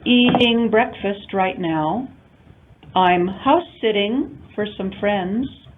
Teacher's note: So notice that all of these in American English pronounced with the flap allophone d, which sounds a little bit like a D or a very quick R more than it sounds like a T.